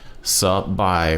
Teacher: low tone first half, flat tone second half, right? So your normal tone of voice on the second half of the word.